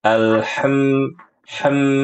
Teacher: Jadi ibu ini masalahnya itu di makhraj ya wasatul halq. Karena ketika membaca huruf ain dan huruf ha itu tampak sekali ee suaranya tuh ke dalam, terlalu ke dalam. Terbukti tadi ketika baca alhamdu bacanya alham ham begitu.